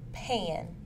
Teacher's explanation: is made using the lips it is a stop sound and is voiceless the vocal cords do not vibrate